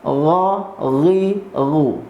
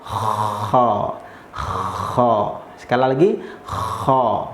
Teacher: Bedanya kalau ghain bersih, kalau kha ini gampangnya seperti kalau kita tidur itu ngorok.